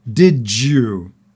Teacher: the last D on did and the Y on you becomes a J sound